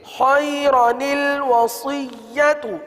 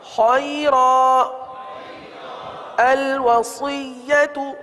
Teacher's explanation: پہلے وصل میں صحیح ہے، خیرن الوصیت، آگے وقف خیرا الوصیت. تو وقف میں جو ہے نون قطنی نہیں پڑھا جائے گا، نون قطنی ہمیشہ وصل میں پڑھا جاتا ہے